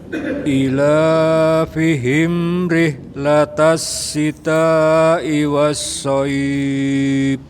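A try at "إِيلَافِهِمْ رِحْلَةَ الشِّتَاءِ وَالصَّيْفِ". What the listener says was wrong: Nah itu i-nya panjang nggak Pak? Ila, terus soif, dibuka bibirnya Pak. Soif. Soif. Dibuka aja Pak, nggak perlu sempurna nggak Pak, yang penting bibirnya dibuka. Soif.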